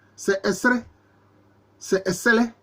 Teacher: comme diraient les linguistes, le L est allophone du R.